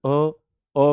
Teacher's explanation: अ में कोई होठ ही नहीं ना खुल रहा है ना बंद हो रहा है। थोड़ा सा हल्का सा खुला हुआ है। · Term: उदासीन स्वर